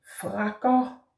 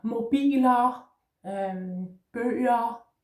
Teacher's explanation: Then the last syllable is ER, pronounced O.